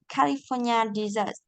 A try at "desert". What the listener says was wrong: Đọc desert là món tráng miệng á. Desert, sa mạc. Desert. California desert.